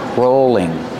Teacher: is this this is called a rolling pin rolling pin he's a long o sound for a rope rolling and the L is between vowels so it's a light L